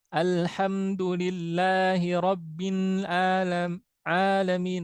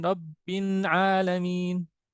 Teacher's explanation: lam di ujung sisi lidah, di ujung sisi lisan. Kemudian nun di ujung lisan, ujung lidah.